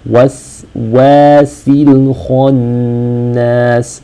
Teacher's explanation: The seen sakina should be read such that the breath and air is continuous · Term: letters of hams